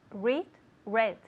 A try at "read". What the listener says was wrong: Yeah, because I need to hear that D. Read, read, read. Because in Spanish, Spanish people tend to drop the D.